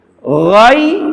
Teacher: Jadi afa goi nggak bisa goi ya, itu harus ada kerikan, getaran di tenggorokan atasnya seperti kha. Cuma saja kalau kha ada dorongan udara, ghain udaranya ditahan